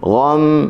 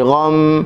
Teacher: Okey, fa athabakum ghamman bi ghammin, gha huruf ghin, gha buka mulut saja, gha, gham, mim bertasydid, gunnah 2 harakat